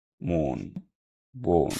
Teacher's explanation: একাক্ষর শব্দের প্রথমে অ এবং পরে দন্তন্য থাকলে ওকারের মতো উচ্চারণ হয় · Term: সংবৃত উচ্চারণ